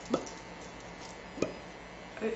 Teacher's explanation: So make it very short. It is staccato and voiced.